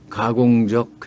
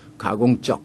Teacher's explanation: 우리 남한 말에서는 가공적 해서 끝에 적이 순한 소리로 나죠. 예사소리. 가공적. 된소리가 아닙니다. 그런데 북한에서는 가공적. 이 적으로 된소리를 냅니다.